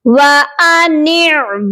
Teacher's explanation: नून को भी हम एक अलिफ की मिकदार खींचेंगे क्योंकि नून के साथ याए मद्दा है।